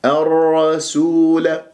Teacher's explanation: والواو مضمومة، وعصوا، شوف وعصوا الرسول، الرسول، اللام شمسية اللي جاء بعدها حرف مشدد، الراء هنا مفخمة لأن مشددة بفتح، والراء الساكنة تفخم تبعا لما أدغمت فيه. ولا أقول الرسول، لا أفخم السين، لا أجعلها صادا